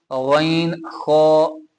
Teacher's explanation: हमजा हा सबसे आगे है, फिर जो है वो आइन हा वो दरमियानी है, गैन खो वो सबसे नीचे है।